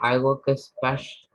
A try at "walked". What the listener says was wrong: walked, not walk it, walked.